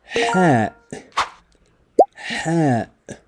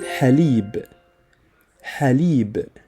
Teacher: This is a crisp, breathy H like in haleeb.